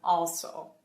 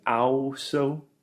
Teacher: the AL combination combines together and simply makes the O sound, very similar to the sound in Portuguese